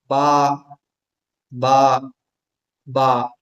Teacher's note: बा मखरज दोनों होठ हैं। यानी पहले दोनों होठ आपस में मिलते हैं। फिर हल्के से खुलते हैं। तब बा की आवाज निकलती है।